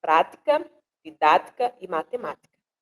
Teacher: Nós temos como rimas as palavras prática, didática e matemática. Todas essas palavras, elas são proparoxítonas, ou seja, elas têm a antepenúltima sílaba acentuada